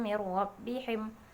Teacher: Mir nun mati bertemu dengan huruf ra. Nomor 3 idgham, tapi idgham bila gunnah.